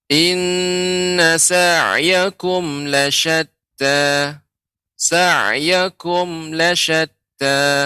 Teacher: ketika kum, ya ini mim matinya ya seperti menggantung